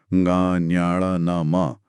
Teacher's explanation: हर वर्ग का जो 5वां अक्षर है, ङ, ञ, न, म, वो अपने वर्ग के स्थान जैसे ङ कंठ से, ञ तालु से के साथ साथ नाक से भी बोला जाता है। इन्हें अनुनासिक कहते हैं।